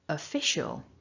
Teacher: so syllable two is the strongest fish and then syllable three we've got that weak schwa and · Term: stressed syllable two